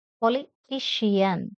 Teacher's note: the word politician has four syllables and third one is stressed